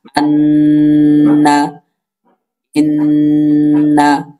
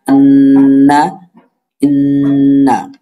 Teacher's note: নাকের ভিতরে একটা গুনগুন আওয়াজ করবে, ওই গুনগুন আওয়াজ করাকেই গুন্না বলে। আর ওই গুন্নাটা উচ্চারিত হয় নাকের বাঁশি হতে, এই জন্য বলা হয়েছে 17 নম্বর মাখরাজ নাকের বাঁশি হতে গুন্না উচ্চারিত হয়, যেমন আন্না, ইন্না।